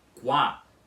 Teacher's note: temos aqui um ditongo, que é formado pela letra U e pela letra A, que é pronunciado como wa. Vocês entenderam aqui na sílaba qua da palavra, o u com a não é um iato que fica pronunciado como u a com esse u mais longo.